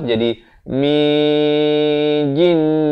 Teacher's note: Kemudian nun mati bertemu jim. Hukumnya ikhfa hakiki di sini, disamarkan. Nak kata nun pun tidak, jim pun tidak.